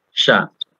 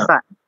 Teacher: Bukan shin ya, bukan shin tapi sin, sa biasa saja. Kita kalau misalkan kita nulis S dan A, sa.